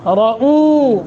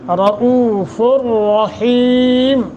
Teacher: را کو موٹا، او پہ تھوڑا سا لمبا کرنا ہے